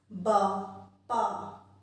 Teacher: प वर्ग के सभी वर्ण होठों से टकराते हैं, जब भी हम उनका उच्चारण करते हैं तो हमारे दोनों होठ टकराते हैं